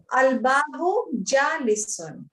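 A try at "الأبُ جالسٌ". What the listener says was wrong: Al-abu. Al-abu, not al-babu.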